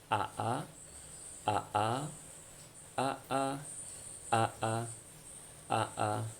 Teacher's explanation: huruf a ini merupakan huruf yang ada di tenggorokan nah lokasinya di tenggorokan